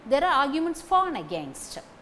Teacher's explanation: For should be pronounced fully in this sentence.